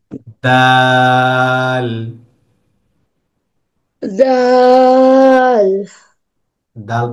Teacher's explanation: দালটা হলো জিহ্বার আগা সামনের উপরের দুই দাঁতের গোড়ার সঙ্গে লাগিয়ে। সেম মাফরাসটা বা সেম কথাটা আমরা তার ক্ষেত্রে পড়েছি, অর্থাৎ তা যে জায়গা থেকে উচ্চারণ করতে হয়, দালটাও সেম জায়গা থেকে উচ্চারণ করতে হবে, জিহ্বার আগা লাল উপরের লাল দুই দাঁতের গোড়াতে লাগিয়ে।